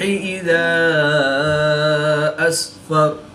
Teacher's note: الف مدہ کے بعد حمزہ دوسرے کلمے میں ہے تو یہاں پر مد منفصل ہوگی، 2 سے 3 الف تک کھینچ کر پڑھیں گے